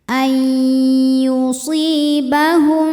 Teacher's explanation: si Ma Thobi'i dahiri sebab ada Ya Sukun didahului harakat kasrah maka huruf Shad kita panjangkan dua harakat saja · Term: Mad Thobi'i